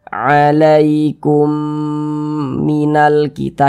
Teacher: Maka kita dengungkan. Jadi suaranya itu kita tahan, kita panjangkan sejenak. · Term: idgham mimi